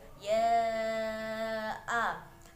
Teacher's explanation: Bacaan mad jaiz munfasil karena terdapat mad yang bertemu dengan hamzah dalam 2 kalimat, panjangnya 5 harokat atau 2,5 alif